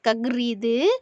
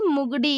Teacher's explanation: இந்த ஆயுத எழுத்திற்கு மாத்திரை அரை மாத்திரை கிடையாது எவ்வளவு அரை மாத்திரையிலிருந்து குறைந்து கால் மாத்திரையாக ஒலிக்கிறது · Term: ஆயுதக் குறுக்கம்